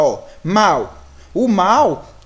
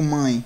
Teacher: quando o som é produzido pela boca mas também tem influência do nariz olha aí quando eu digo mãe olha lá tá vendo que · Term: ditongo nasal